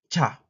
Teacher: Palatal stop affricate aspirated